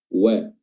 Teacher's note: huruf wau yang merupakan huruf yang keluar dari asyafatain ya bibir dimonyongkan